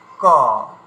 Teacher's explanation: কটা উচ্চারণ করার সময় হাতটাকে রেখে দিন, দেখবেন হাতে কোনো হাওয়া লাগবে না মুখের বাইরে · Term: অল্প প্রাণ